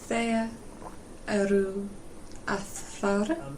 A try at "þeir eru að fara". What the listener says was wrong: Yeah, exactly.